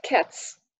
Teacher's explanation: cats with the voiceless T and the voiceless s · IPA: /s/